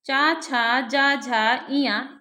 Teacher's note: ये 5 व्यंजन तालु से बोले जाते हैं, तो इसके कारण तालव्य वर्ण कहे गए हैं।